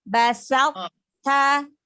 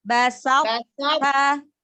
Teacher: Sa-nya tipiskan dulu sinnya, lalu sebelum ke ta baru angkat pangkal lidahnya. Basat ta. Angkat lagi pangkal lidahnya begitu huruf to-nya itu. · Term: sifat itobak